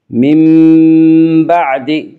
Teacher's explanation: نون ساکن کو میم سے بدل کر غنہ کے ساتھ پڑھیں گی۔